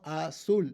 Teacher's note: azul ends in an l, azul. The stress is on the last syllable